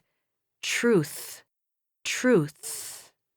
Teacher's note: when you articulate the th sound in the word truth you need to stick your tongue out slightly in between your upper and lower teeth